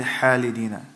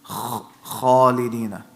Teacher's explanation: you want it to be a heavy letter, you can feel the back of your tongue going up. So we say in a heavy manner, meaning we say kha.